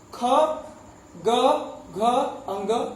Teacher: क वर्ग का उच्चारण कंठ से होता है